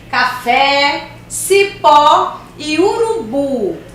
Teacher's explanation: Palavras oxítonas, cuja sílaba tônica é a última.